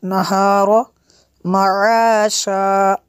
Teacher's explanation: نون کے آگے الف ہے، اس کو کھینچنا ہے ہم نے